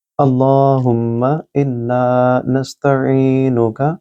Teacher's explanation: یہاں لام سے پہلے اللہ کے نام سے پہلے زبر ہے اس کو موٹا پڑھیں گے